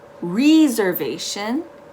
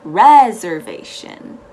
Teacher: reservation the important thing to remember in this word is that the first e takes an e sound the e h sound not an i sound